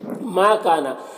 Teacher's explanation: ماں میں الف مدہ ہے، کاف میں بھی الف مدہ، دونوں کو ایک الف کے برابر کھینچیں گے